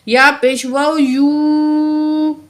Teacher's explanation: واؤ یو، کیونکہ یہ واؤ ساکن ہے، پچھلے الفاظ پیش ہے، واؤ مد ہے، دو الف کے برابر واؤ کو ہم کھینچیں گے